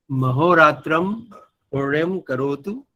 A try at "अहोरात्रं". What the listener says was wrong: अहोरात्रम्। अहोरात्र, जब श्लोक बोलते हैं वहां पर पुण्य महोरात्र वो मिला के ही बोलना होता, श्लोक का नियम है। किंतु अभी हम व्यवहार करेंगे तो आवाम और अहोरात्रम।